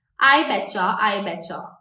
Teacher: often words that end in a t and the next word starts with Y they merge together and the sound becomes a chir sound I betcha I betcha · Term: ch sound